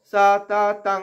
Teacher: অনুস্বারটা এখানে উঙা উচ্চারণ, উঙ্গ, ক খ গ ঘ উঙ্গ, সেই উঙ্গ উচ্চারণটা হবে।